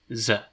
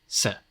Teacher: S is often voiced, Z, while soft C is pretty much always voiceless, S. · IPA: /z/